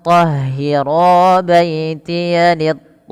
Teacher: Tandanya ada tanda seperti ini juga, tapi kita lihat posisi huruf hamzahnya. Posisi huruf hamzahnya pada satu kata, pada lafal kata taifin. Sehingganya to-nya tetap dipanjangkan 4 atau 5, tapi hukum tajwidnya berbeda. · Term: mad wajib muttasil